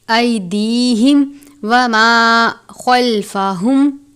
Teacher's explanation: میم ساکن کے بعد واو ہے، اظہار شفوی کا قاعدہ لگتا ہے یعنی میم ساکن پر غنہ نہیں کرتے